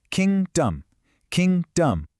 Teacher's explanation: Do you hear how the first part is loud and clear and we pass quickly over the second part? · The stress falls on the very first part of the word.